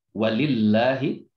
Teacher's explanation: lam jalalah itu dibaca tarkik atau tipis. Jadi tidak dibaca walillahi.